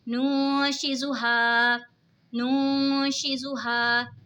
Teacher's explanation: नून साकिन के बाद हुरूफ़े इक़फ़ा का शीन आ रहा है तो इक़फ़ा होगा यानी यहाँ पे गुन्ना करके पढ़ेंगे। अलिफ से पहले ज़बर है तो अलिफ मद्दा होगा।